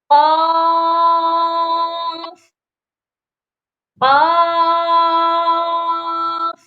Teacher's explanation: اس قاف کا مخرج ہے زبان کی جڑ جب اوپر لٹکے ہوئے گوشت کے چھوٹے سے ٹکڑے سے ٹچ ہو، چھوٹے سے ٹکڑے کے ساتھ ٹکرائے تو قاف ادا ہوتا ہے۔